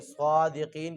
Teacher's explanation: صادقین کو پڑھتے ہوئے صاد کو موٹا کریں گے اور قاف کو بھی موٹا کریں گے